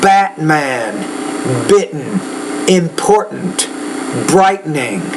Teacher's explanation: So on this one, it's when you get Batman. Notice how when I'm saying these, I'm not really pronouncing that T. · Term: glottal stop